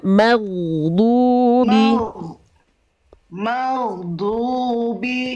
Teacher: Huruf ghain dia punya sifat mengalir suara. Pastikan ketika ghain sukun dia mengalir. Ghairil maghdubi, keluar dari ujung tenggorokan, mengalir suaranya maghdubi.